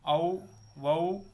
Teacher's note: ஔ, வௌ என அவுகார எழுத்து தனித்து வரும் இடங்களில் தனக்குரிய 2 மாத்திரை அளவு முழுமையாக ஒழிக்கிறது.